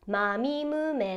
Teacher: basically 16 japanese kana's have a nasal component to them where the very last noise depends on the airflow coming out of your nose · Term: nasal consonants